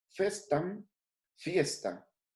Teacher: La F inicial se mantiene y va seguida de una E tónica, diptonga en IE.